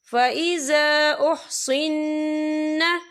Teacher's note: یا دیکھیں فَإِذَا، یہاں خالف سے پہلے زبر ہے، اور اس پہ چھوٹی سی مد بھی ہے، تو ہم اسے 3 یا 4 حرکت کے برابر کھینچ کے پڑھیں گے